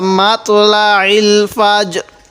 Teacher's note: ফাজ র টা হালকা করে উচ্চারণ করব